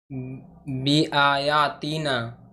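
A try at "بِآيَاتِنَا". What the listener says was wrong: तीना नहीं होगा यहाँ पे, यहाँ पे या मद्दा नहीं है ना, तीना।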